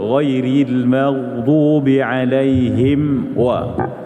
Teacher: Idhar syafawi tu artinya mim mati tu kena tutup mulut-mulut.